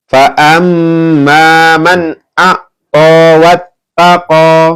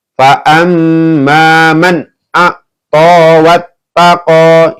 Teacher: Ini dibaca jelas ya, karena ada nun sukun bertemu dengan alif ya. Hukumnya adalah idhar ya.